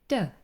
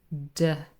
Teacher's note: Touching The alv Ridge and we say the sound D so tip of the tongue D is touching the little bump behind your teeth we call it the Alva rich and we produce the sound